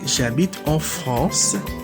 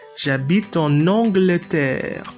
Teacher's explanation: There's a liaison there because Angleterre starts with the vowel A.